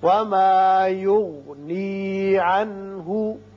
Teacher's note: عنہ میں نون ساکن کے بعد ہا ہے جو کہ حروف حلقی میں سے ہے، لہذا یہاں اظہار حلقی ہوگا.